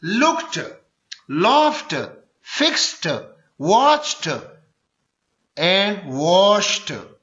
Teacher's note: یہ آخر میں ٹ آئے گا، ڈ نہیں آئے گا